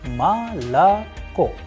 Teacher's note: o is not under stress is going to turn into a sound of a · It is because the stress or the udari is falling onto the last o and that is why the first two o sounds like a